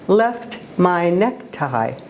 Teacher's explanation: the short e sound is followed by a long ey sound and then that pattern is repeated